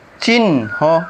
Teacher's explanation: তিন নম্বর নিয়ম শব্দের হ বর্ণের সাথে যদি দন্দনফলা থাকে তাহলে এই হ বর্ণের উচ্চারণটা সুপ্ত থাকে। আর ইংরেজি বর্ণ এন এইচও এর মিলিত উচ্চারণ হয়।